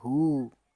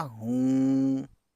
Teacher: छोटी है पे पेश, वाव पे उल्टा पेश, तो ये हो गया हु, और नून गुन्ना मिला देंगे तब होगा हूँ। नाक से आवाज़ आती है नून गन्ने की आवाज़ मिलाने पे